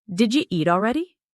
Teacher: new sounds appear between words like a Y sound or a soft ch sound